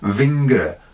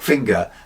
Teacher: “v”, rather than “f”, as in “vingre” for “finger”